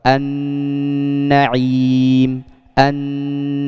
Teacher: suara dari huruf nun dan mim yang keluar dari hidung